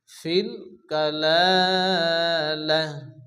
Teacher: ফিল কালালাতি, আয়াতের মাঝখানে তো আসে, এটি সাধারণ থামার চিহ্ন। যদি আমরা এখানে থামি তাহলে এই গোল তাটি হ্যাঁ সেকেন্ডে পরিণত হবে।